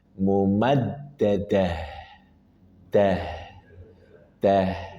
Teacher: Ha dari pangkal tenggorokan. Dan ingat ha dia punya sifat rakhawah. Maka ketika sukun alirkan suara dengan sempurna. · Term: sifat rokhowah